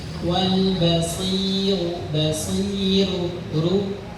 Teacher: Karena harakatnya sebelumnya kasrah pada huruf shad, maka rnya itu harus tipis.